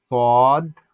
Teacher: সদ চার আলিফ পরিমাণ হবে